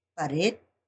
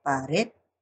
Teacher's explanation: la elevación de la voz en la última sílaba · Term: palabras agudas